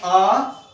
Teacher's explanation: यानी अ का उच्चारण स्थान अ है तो आ का उच्चारण स्थान भी कंठ ही है, क्योंकि हमारे उच्चारण स्थानों में सबसे पहला उच्चारण स्थान कंठ ही है। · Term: कंठ्य ध्वनि